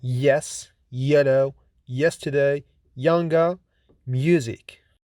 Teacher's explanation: Y is voiced palatal glide or semivowel approximant consonant